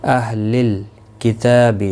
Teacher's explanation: لام ساکن کو ہلانا نہیں، تا کے اوپر کھڑی زبر ہے، 1 الف کی مقدار کے برابر کھینچ کر پڑھیں گے